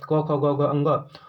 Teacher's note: उच्चारण स्थान कंठ गले से होता है, वर्ण नाम कंठाई से बोला जाता है